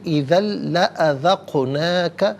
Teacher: قاف ساکن ہے لیکن حرف قلقلہ ہے تو یہاں پر قلقلہ ہوگا، آواز لوٹتی بھی محسوس ہونی چاہیے